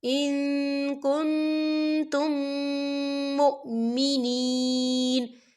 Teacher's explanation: یہاں دیکھیں ان، یہاں نون ساکن ہے اور نون ساکن کے بعد جو ہے کاف آ رہا ہے، اور کاف جو ہے اکفا کا ورڈ ہے، ہم یہاں اکفا کریں گے، نون ساکن کی آواز کو ناک میں چھپائیں گے